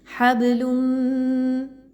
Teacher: تنوین کی آواز کو اپنے میم کی آواز کے ساتھ ملا دینا ہے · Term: ادغام ود غنہ